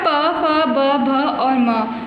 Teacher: प वर्ग अर्थात प फ ब भ और म वर्णों का उच्चारण स्थान ओष्ठ है। इनमें बच्चों ओष्ठ आप समझते हैं ना, होठ लिप्स को कहा जाता है।